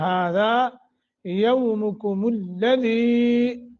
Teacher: دی حروف مدہ تھوڑا سا کھینچیں گے